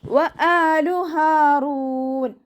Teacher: ഹംസയുടെ കൂടെ അലിഫ്മദ് വന്നു, 2 കൗണ്ട് നീട്ടി കൊടുക്കുക. ഹ സൗണ്ടിനെ തൊണ്ടയുടെ അവസാന ഭാഗത്ത് തന്നെ കൊണ്ടുവരിക കേട്ടോ. ഹംസയുടെ സൗണ്ടായി പോവാതെ നോക്കുക.